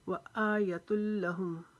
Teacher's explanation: حمزہ کے اوپر کھڑا زبر ہے، اس کو ایک الف کے برابر کھینچیں گے